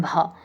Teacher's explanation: होठों से इनका उच्चारण होता है भा, क्योंकि होठ स्पर्श करते हैं ना बोलने में।